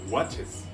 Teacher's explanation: un verbo como watch que termina en ch es decir una sibilante al agregarle es no se convierte en wats se convierte en un sonido vocálico watches